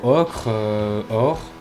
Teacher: Et le bref donnera le O ouvert, comme dans ocre, or